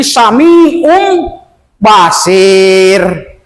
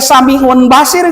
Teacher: maka tanwin domah tukarkan kepada mim · secara tulisannya samiun ya, tetapi dibacanya ditukarkan n-nya kepada mim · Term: iqlab